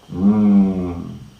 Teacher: the first nasal sound m is produced by a closure of the oral passage between lower lip and upper lip baval nasel air is just coming through the nasal cavity and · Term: bilabial nasal